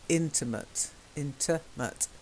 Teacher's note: so the stress on the first syllable